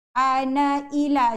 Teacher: kalau kita nak sambung ana dengan ila, na itu dibaca satu harakat.